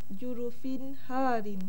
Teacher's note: Bacaannya hendaklah dinyatakan dan diterangkan bunyi baris dua tanpa dengung. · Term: izhar halqi